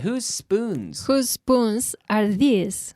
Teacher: You have the S sound. Whose spoons are these? Whose spoons are these? Whose spoons are these? We link the S onto the S.